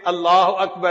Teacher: اللہ کا جو لام ہوتا ہے نا اس کو پر پڑھتے ہیں، اس کو تفخیم کہتے ہیں قراء کی زبان میں۔